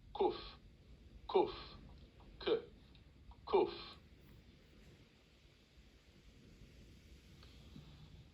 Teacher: This is a K sound, but it's slightly further back in the throat.